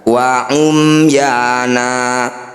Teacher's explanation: Summa wa umyana, mim sukun bertemu ya, mim sukun bertemu selain mim dan ba, disebut bacaan izhar syafawi. Bunyi mim sukunnya dibaca dengan jelas, tidak usah didengungkan.